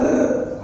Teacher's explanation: कंपित कारण की र चा उच्चार करताना कंपन पावते म्हणजे र बघा असा र बिरतो म्हणजे तो कंपन पावतो म्हणजे र चा उच्चार करताना कंपन पावते त्यामुळे त्याला कंपित वर्ण म्हणतात किंवा त्याला दंड नसलेला वर्ण म्हणतात.